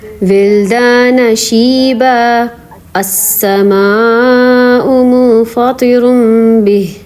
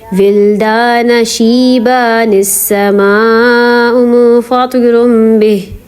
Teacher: اگر ہم پچھلی آیت پہ رکتے نہیں ہیں، ملا کے پڑھتے ہیں، تو پھر ہم جیسے یہ شیبہ پہ 2 زبر ہے تو ہم اس کا ایک زبر نہیں پڑھیں گے، پھر نون پڑھیں گے